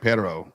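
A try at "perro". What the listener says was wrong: you got to roll the double R.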